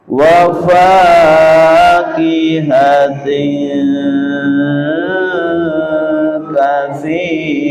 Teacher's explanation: Kasroh tanwin, ayo kasroh tanwin bertemu dengan kaf dengan dengung dengan lama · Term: ikhfa